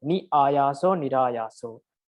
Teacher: So in Sanskrit, it is nir. So ni, when you combine ni with another word like ni ayaso, ni and ayaso, it becomes nirayaso. R is inserted.